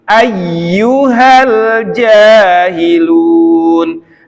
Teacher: Kalau ini iyanya ditekan, ada naber di situ. Ayyu benar-benar kuat dari tengah lidah dengan langit-langit. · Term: tasdid ya